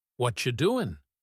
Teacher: But in a casual conversation, a native speaker will say, "What you doing?" The T and the Y sound mixed together to make a ch sound. The G at the end disappears. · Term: reductions